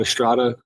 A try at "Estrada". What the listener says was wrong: No, you gotta roll that R, man.